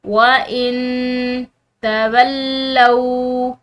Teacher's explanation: نون ساکن اس کے بعد تا حروف اخفا میں سے، تو اس نون ساکن پر جو ہم اخفا کریں گے.